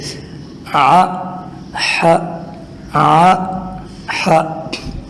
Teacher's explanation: دیکھیں ا ہ ا ہ، عین اور ح یہ دونوں ادا ہوتے ہیں گلے کے درمیانی حصے سے۔ دیکھیں کہاں سے آواز نکالیں گے، گلے کے بالکل بیچ سے، ع ح ع ح۔